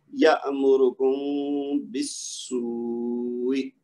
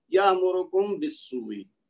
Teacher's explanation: ہونٹوں کو ملائے بغیر میم کی آواز کو 2 حرکت تک غنہ کے ساتھ ادا کریں گے اور پھر با کی آواز نکالیں گے تو یہ صحیح ادائیگی ہو جائے گی. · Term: اخفاء شفوی